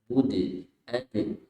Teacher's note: A'bud. Dal qalqalah ya, dipantul. Bud. Ad.